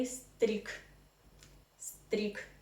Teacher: Yeah, but here again you need to know something about Russian devoicing. If you have this consonant g in the end of any Russian word, you need to pronounce it as a non-voiced consonant. So g transforms into k in the end of any Russian word.